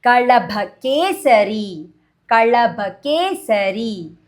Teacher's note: wherever Kalaba comes, L will touch upper palate of your mouth